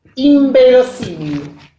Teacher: Lo pronuncia como M, no como N.